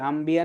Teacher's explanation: ন সাউন্ডের পরে যদি ব সাউন্ড আসে, it actually replaces with M, ম সাউন্ড